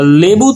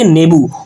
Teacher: ল ব্যঞ্জন ধ্বনিটা ন হয়ে গেছে, অর্থাৎ ব্যঞ্জন ধ্বনির কিন্তু বিকৃতি সাধন হয়, এই লয়ের কিন্তু বিকৃতি সাধন হয়ে ন হয়ে গেছে। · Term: ব্যঞ্জন বিকৃতি